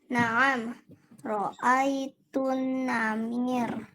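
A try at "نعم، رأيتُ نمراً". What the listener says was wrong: Enggak, pendek. Naam, ro'aitun namiro.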